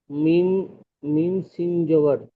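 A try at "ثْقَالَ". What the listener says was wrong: সিন নয়, এটা সা। যেটা পড়ে এটা শিন, এটা সা। তা, সা।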